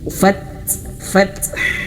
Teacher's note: sempurnakan dulu huruf ta ini sifatnya yaitu dia mengalir nafas dan juga dia syiddah